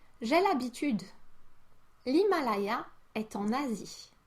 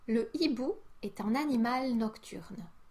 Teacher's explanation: With the H muet, we use a contraction or what is called an elision